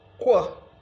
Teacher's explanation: But when you want to say ko, as in q, ko, all right, in quick, the shape of your mouth will no more be the same way it is when you are producing only k. It now becomes somehow rounded, taking the shape of a labial sound. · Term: labialized